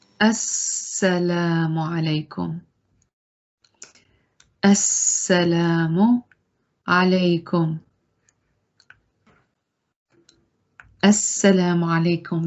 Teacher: We don't pronounce the lam because we have shadda on the sound that is after the lam.